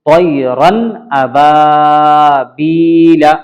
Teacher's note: طیرن تنوین کے بعد فوراً حروف حلقی کا حمزہ آیا ہے، اس لیے اس نون کو ظاہر کر کے پڑھیں گے